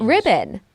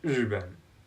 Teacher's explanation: The RI noise in IPA is called the voiced retroflex fricative, and it's actually one noise, even though it is represented by two letters.